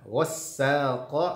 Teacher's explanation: sinnya diberikan nabrah tekanan suara karena ada tasydidnya